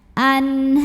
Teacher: Maka tebal, pangkal lidah ngangkat. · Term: tafkhim